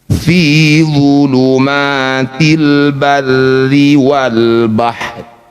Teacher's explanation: Ketika dihentikan rnya ini tetap dibaca namun tidak usah dibunyikan atau lebih tepatnya dibaca lirih atau setengah makharijul huruf. Fi dulumatil barri wal bahr.